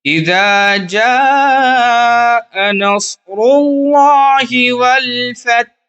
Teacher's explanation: اذا جاء نصر اللہ والفتح، فتح جو ہم رک رہے ہیں، والفتح ہا کو بھی جزم دے دیں گے اور فا تا ہا زبر فتح ہو جائے گا۔ یہاں پہ جیم پر چونکہ مد ہے، مد متصل ہے، اس کو تھوڑا کھینچیں گے، منیمم 3 الف کے برابر تو کھینچنا ہی ہے